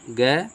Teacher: इस क वर्ग में जो है अल्प प्राण कौन अक्षर है, अल्प प्राण अक्षर जो होते हैं वह जो है कम सांस लेते हैं, कम हवा, कम साउंड में बोला जाता है